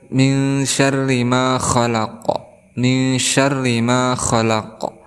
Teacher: ada ra berharakat kasrah, maka kita hukumi sebagai tarqiq.